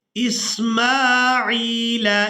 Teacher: आइन को याए मद्दा के साथ मिलाते हुए खींच कर अदा करेंगे